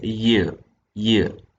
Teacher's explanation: raised towards the heart palate in the case of parallel sounds the front of the tongue is active as articulator whereas the hard palate is the passive articulator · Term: Palatine sound